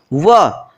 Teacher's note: वकारस्य दंतोष्ठम, व इस वर्ण का उच्चारण स्थान दंत और ओष्ठ होता है।